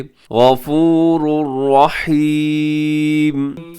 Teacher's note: गफूरुर रहीम, गफूरुन के आखिर में तनवीन है और तनवीन के बाद रहीमुन के शुरू में रा है। इदगाम हो रहा है और इदगाम भी बगैर गुन्ने के।